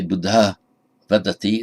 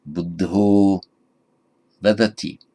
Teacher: ah before a voiced consonant becomes o